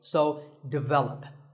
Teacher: the first syllable is actually di, and the stress is on the second syllable, so develop.